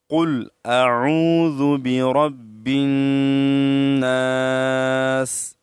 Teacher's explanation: نک میں جو ہڈی ہے، اس ہڈی کو خیشم کہا جاتا ہے۔ تو نون مشدد میں ہم نک تک آواز لے جائیں گے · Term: غنہ